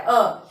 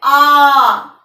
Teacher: अ जो है वो ह्रस्व स्वर है, उसके उच्चारण में कम समय लगता है अ, लेकिन जब हम बोलते हैं आ तो समय ज्यादा लग रहा है